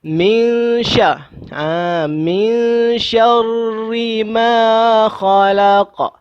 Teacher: di situ min dengung, iaitu ikhfa. Di situ nun bertemu shin. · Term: ikhfa hakiki